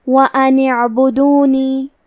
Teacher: کلمت اعبدونی کی شروعات میں الف ہے، لیکن کیونکہ حمزۃ وصل ہے تو ہم حمزہ کو ظاہر نہیں کریں گے، نون کے بعد حرف العین کو پڑھیں گے۔